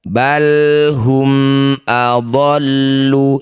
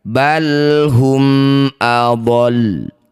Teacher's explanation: Awalnya adolu. Karena dihentikan maka sisakan bacaan syiddah atau ditahan saja tanpa mengeluarkan bunyi dummahnya.